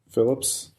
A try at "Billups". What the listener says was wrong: It's Phillips with a B.